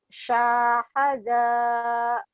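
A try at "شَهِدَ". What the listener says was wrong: Sya-nya pendek. Syahada.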